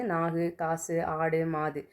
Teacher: உ அப்படிங்கிற எழுத்து வந்து தன்னுடைய ஒரு மாத்திரையில இருந்து அரை மாத்திரையா வந்து குறைஞ்சு ஒளிக்கும். இதுதான் வந்து குற்றியல் உகரம்.